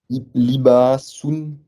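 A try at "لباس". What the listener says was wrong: très bien, excellent.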